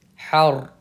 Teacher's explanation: र साकिन से पहले जबर आ रहा है इसलिए र को हम पुर पढ़ेंगे